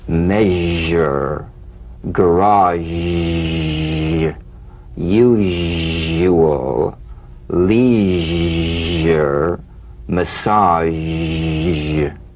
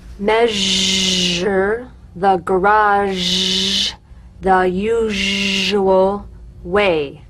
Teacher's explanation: All suggestion of the SH must vanish. Feel the SH overridden by the deep rumbling vibrations of the ZH, resonating against the teeth and the tip of the tongue. If you don't feel your teeth vibrating on this sound, you're not making a good zh.